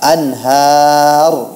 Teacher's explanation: pada kata anhar itu dibaca, nunnya dibaca jelas karena setelahnya ada huruf ha